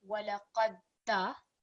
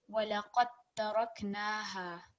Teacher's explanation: So what this means is it's not going to be walaqadda. We're going to join the qaf directly with the ta mushaddad. So it will be walaqad taraknaha.